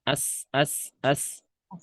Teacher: Sin punya sifat desis. As. Sama kayak nyebut S gitu ya.